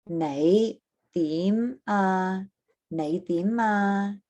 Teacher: So it is a rising tone. It's our low rising.